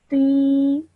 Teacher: This is a ya madda, so you have to stretch the sound of ti for 2 seconds.